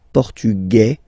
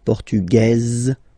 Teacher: Masculine, portugais, you don't pronounce the S. Feminine form, portugaise, you pronounce this z sound, okay?